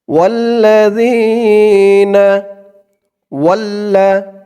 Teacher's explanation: জালের উচ্চারণটা একদম নরম পাতলা করে বলতে হবে জিহ্বার মাথা উপরের দাঁতের মাথার সাথে লাগবে